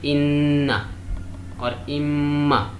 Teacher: It's called nasal letters. This gunna sound comes from the base of the nose.